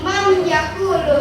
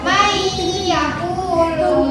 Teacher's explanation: nun sukun bertemu dengan ya. maka dibaca dengan dengung